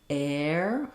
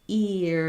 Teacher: So just try saying air, stay open on that A, air, and then ear, you're going to be more closed. Then once you can say air and ear, add your F sound back, fair and fear.